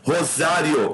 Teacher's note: semivogal e vogal, ditongo crescente